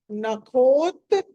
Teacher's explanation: నఖ ఖ అన్నది ఒత్తి పలకాలి